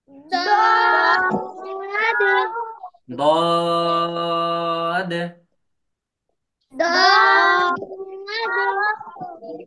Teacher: এই দদ হরফটায় 3 আলিফ টান দিয়ে পড়তে হয়।